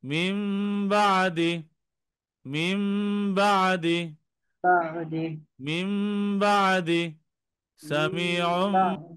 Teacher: মানে নুন সাকিন মিমের মতো পড়তে হবে, তানমিনকেও মিমের মতো পড়তে হবে। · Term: ইকলাব